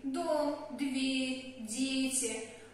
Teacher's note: Когда мы произносим русские слова, например, «дом», «дверь», «дети», наш язычок упирается сразу в зубы.